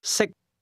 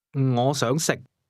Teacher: 識， The difference between the two is that can is spoken with a high level tone, and to eat is pronounced at a low level.